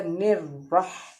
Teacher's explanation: را کے اوپر تشدید ہے، را 2 بار پڑھا جائے گا